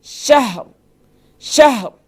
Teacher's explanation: اب دیکھیں یہاں بھی ہم یہاں ہا ساکن ہے اور وقف کی صورت میں را بھی ساکن ہو جائے گی, تو یہاں بھی ہا کے اوپر زبر نہیں, فتحہ نہیں پڑھنا, بلکہ ہم نے یہاں بھی ہا کے اوپر سکون ہی پڑھنا ہے